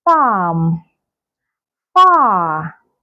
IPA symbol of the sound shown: ɑː